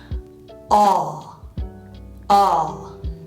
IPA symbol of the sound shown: ɑ